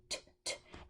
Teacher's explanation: It's an aspirated T, so you can hear a lot of air come with it.